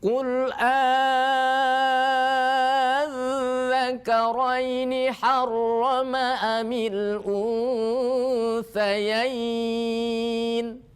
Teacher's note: Jangan qul adza, jangan disamakan dengan dal yang tidak bertitik ya. Kalau dal bertitik punya sifat rukhwah, maka suaranya masih mengalir.